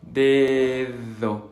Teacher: Esa primera D es un poco explosiva. Dedo. Y la segunda D es interdental, es decir, vamos a poner la lengua entre los dientes.